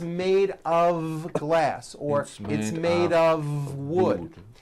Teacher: It's not a wood with an unvoiced F. It's all voiced and it's all connected.